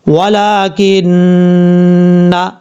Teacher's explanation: کاف کے بعد جو نون ہے اس نون کو بھی شد کی وجہ سے غنہ کریں گے ایک الف کی مقدار